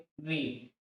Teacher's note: मूर्धन्य स्वर में एक ही स्वर हमारे पास है ऋ इसका उच्चारण स्थान है मूर्धन्य